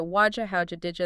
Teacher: they show something called coalescence sounds merging completely into a new sound. Did plus you becoming Jew is a huge change.